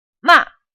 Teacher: It's like if our plane is going to do a crash landing, it quickly goes from a high altitude down to the ground, and your voice does the same thing. It starts off high, makes a forceful sound, but quickly falls and fades. Ma. Imagine when you're a teenager and your parents came to nag you, you'd probably get really frustrated and annoyed, and then you would say, "What?" And that's exactly the quickly falling tone we're looking here.